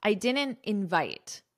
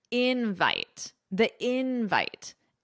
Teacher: So with verbs, the syllable stress is on the second syllable, invite. But with nouns, the syllable stress is on the first syllable, invite. Using the noun invite is a very casual way of saying the word invitation.